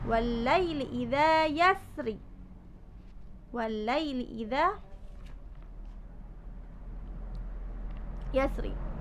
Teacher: Lalu idza itu mad tabi'i, fathah bertemu alif dibaca panjang · dimana roknya itu dibaca tafkhim, sebab rok itu sukun karena wakof, didahului huruf yang sukun, kemudian didahului dengan huruf yang berharokat fathah.